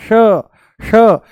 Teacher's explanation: जैसे ही हम बोलते हैं श, जैसे ही बोलते हैं हम श, मूर्धा ऊपर से बोला जाता है, श श, जीभ को थोड़ा सा ऊपर घुमा करके तालू से लगा करके बोला जाता है